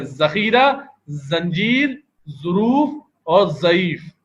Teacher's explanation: اردو کے اندر ہم دیکھیں تو ذال سے ذخیرہ, زا سے زنجیر, اور غویں سے ظروف, اور ضاد سے ضعیف. تو چاروں حروف ہی زا کی ادائیگی سے ادا ہو جاتے ہیں